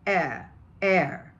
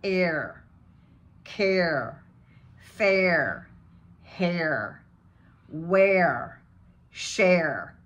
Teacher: if you were British and doing a British accent, you don't do any R's at all. You would just drop the R and say, air, air.